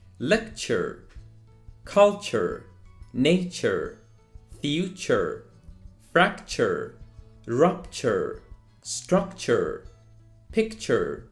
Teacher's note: One more problem that I have noticed among the majority of my Spanish and Portuguese speaking students is the pronunciations of words ending in ture. What you need to keep in mind is that it doesn't sound tour. It actually sounds like chur, chur.